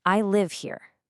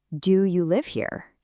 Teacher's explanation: You hear how my voice just drops at the end? That falling tone says this is a fact. · That little rise in pitch at the end completely flips the meaning.